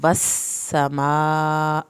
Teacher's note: والسماء، سین کے اوپر شد ہے، سیٹی کی آواز بھی نکلے گی، شد بھی پڑی جائے گی۔ والسماء، مد واجب کو 3 الف کے برابر لمبا کرنا ہے، حمزہ کی زیر کو لمبا نہیں کرنا۔